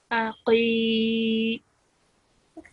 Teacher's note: this qaf is a thick sounding letter, and it should be pronounced from the middle of your throat.